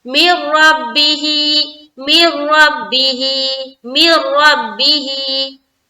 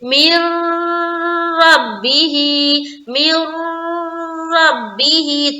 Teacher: इदगाम ताम में हम गुन्ना नहीं करते, बगैर गुन्ना के करते हैं। तो हम यहाँ पर बगैर गुन्ना के करेंगे, यानी कि रुकना नहीं है, नाक में आवाज को रोकना नहीं है, हम जल्द पढ़कर निकलेंगे।